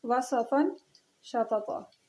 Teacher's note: جی، حروف استفال میں سے بھی ہے، تو نون تنوین کو چھپا کے غنہ کے ساتھ پڑھیں گے. اور قاعدے کا نام ہے اخفاء حقیقی مرقق.